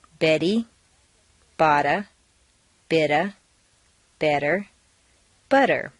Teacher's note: all of the tea's are in weak positions so they all sound like soft DS